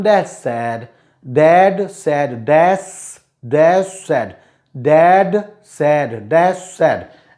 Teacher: In Dad said, last d will not be spoken, and d will be spoken as dash said.